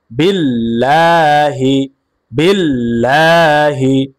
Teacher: কারণ আল্লাহ শব্দের লামের পূর্বে জের আসছে, এই কারণে আল্লাহ শব্দের লামকে বারিক করে পড়তে হবে, অর্থাৎ পাতলা করে পড়তে হবে।